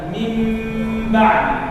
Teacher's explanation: يعني إذا حولنا الميم النون إلى ميم نفعل الجملة ونراعي الإخفاء أيضا، فنقرأ هكذا من بعد، ليس نقرأ من بعد، نقرأ من بعد. الشفتين قد تكون متلاصقتين، يعني يلمسون بعضهم بعضا دون كز، دون كز. يعني لو فعلنا الكز هذا ينتقل الحكم إلى الإدغام، يكون خطأ. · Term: الإخفاء الشفوي